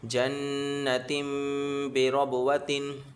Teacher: نون میں بھی غنہ کریں گے، اور با میں قلقلہ کریں گے